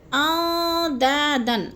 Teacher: اندادن، ان میں اخفا ہے، نون ساکن ہے اور حروف اخفا میں سے ہے، تو آواز کو ہم نے ناک میں چھپا کر پڑھنا ہے، جیسے داؤں، دا کو بھی کھینچنا ہے، الف مدہ آ گیا ہے، داؤں پہ ہم نے ادغام کرنا ہے، سختی سے جمع کے ساتھ لفظ کو پڑھنا ہے۔